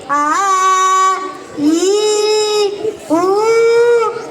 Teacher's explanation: దీర్ఘాలను నేను రెండు మాత్ర కాలంలో పలుకుతాను